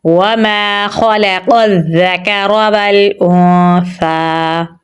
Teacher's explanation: سا کے اوپر کھڑی زبر ہے اور مد بھی ہے تو اسے ہم لمبا پڑھیں گے